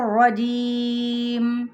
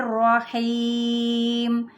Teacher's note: मैंने तूल तक ले गई 6 सेकंड तक, हीम और जीम को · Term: मद्दे आरिज़ वक्फ़ी